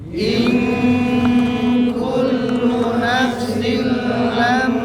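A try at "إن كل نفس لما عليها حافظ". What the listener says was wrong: haf tipisnya ya harus tebakkan Hafid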